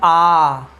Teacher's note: सबसे ज़्यादा मुख खुला है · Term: विवृत्त